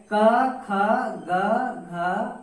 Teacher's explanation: इनका उच्चारण स्थान जो है कंठ होता है